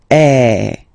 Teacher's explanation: the sound is really open and normally your mouth should be opened a little bit more than with the accent as well okay so it goes like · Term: open one